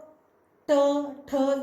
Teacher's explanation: अब मूर्धा में क्या होता है कि जो ट, ठ ये बात जब आप बोलते हो, ये शब्द जब आप बोलते हो तो आपकी जीभ जो है वो आपके ऊपर जो मूर्धा भाग है उसको, आपके मूर्धन्य भाग को टकराती है।